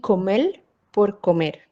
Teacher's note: la neutralización de consonantes líquidas en el español caribeño